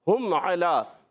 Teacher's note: ہم ادا ہوتا ہے ہا حلق کے نیچے والے حصے سے